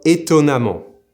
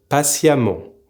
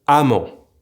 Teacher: Now there's a bit of a quirk here. It's that regardless of if the adverb ends in EMMENT or AMMENT, we will pronounce both ending amant, like if it were with an A